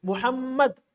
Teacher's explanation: मीम पर शद है तो इस मीम को हमने 2 मरतबा अदा किया